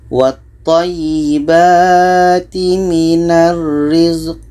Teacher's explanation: qa mati adalah qalqalah ada pantulan